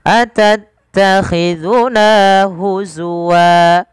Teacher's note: Na mad tabi'i 2 harakat, nanya dipanjangkan 2 harakat, jangan terlalu lebih, jangan atattakhizuna huzwa kepanjangan, 2 saja.